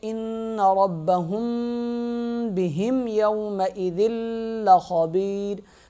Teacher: ذال اور لام آپس میں سختی کے ساتھ مل جائیں گے، · با کو سخت پڑھیں گے، میم پہ غنہ کریں گے،